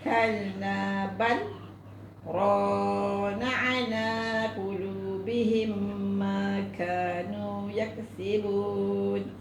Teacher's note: Kalabal berhenti 2 harakat, jangan tarik nafas, tu nama saktah. Berhenti sekadar 2 harakat tanpa mencuri atau tarik nafas.